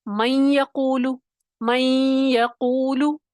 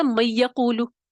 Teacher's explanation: نون کی صفت غنہ ادا ہو رہی ہے، نون کی آواز آپ کو سنائی دے رہی ہے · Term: ادغام ناقص